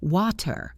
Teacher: In British English, they are more likely to use a true T where it is crisp and clear